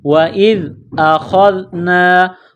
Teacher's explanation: زال کو پڑھتے وقت زبان باہر نکالیں گے، زال کو نرم پڑھیں گے